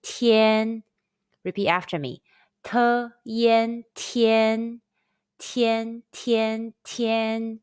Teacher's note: Let's combine the initial t, the final yen, and the high-pitched first tone all together.